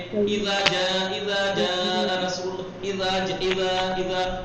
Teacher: ज़ाल नरमी से अदा होता है, अपने मखरज क्या है, जबान की नोक, ऊपर के दांतों का सिरा वहां लगना चाहिए